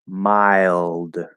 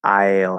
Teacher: It doesn't have to be 100%, but we get up into that I instead of starting to blend into a triphthong. We get up into the I at the end of the diphthong, and then we start pulling into the ul. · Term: half L